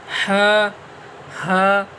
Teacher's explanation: छोटा ह ये शुरू हल्क से निकलता है